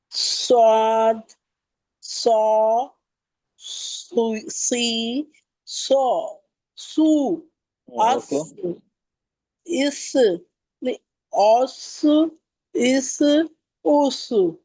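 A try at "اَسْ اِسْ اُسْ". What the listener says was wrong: ये हमजा को मोटा क्यों करी? ऑफ, तो हमजा भी मोटा हो गया है तो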